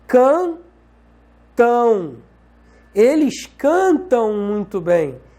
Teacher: Esse M aqui, essa letra M, tem som de U. Se a letra M tem som de U, essa letra M se comporta como uma semivogal.